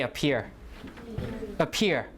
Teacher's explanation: so the stress falls on the second syllable